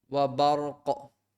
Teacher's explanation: Alright, the qaf, the red means qalqala, so it has a kind of echoing sound